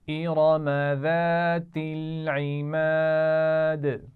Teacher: ارم، اس میں را کو موٹا پڑھنا ہے. · ذات میں ذال ہے، ٹھیک ہے، تو اس کا خیال رکھنا ہے، سیٹی نہیں ہونی چاہیے.